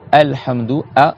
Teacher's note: En bas de la gorge, on a le Ha et le A. D'accord? Quand tu dis par exemple Alhamdou, A, ça sort d'ici.